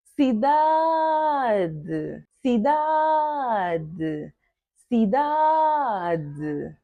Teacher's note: Da é a sílaba tônica.